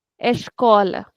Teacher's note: so I will stretch the sound of co